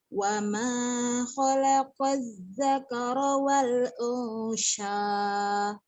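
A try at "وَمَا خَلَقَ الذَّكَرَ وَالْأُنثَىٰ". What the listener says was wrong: Bukan, itu ujungnya bukan shin, tapi saya. Wa ma khalaqal dzakara wal untha.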